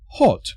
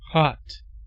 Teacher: In British English, the O sound is made with rounded lips, and in American, it is a much longer vowel sound that is similar to the pronunciation of the word arm.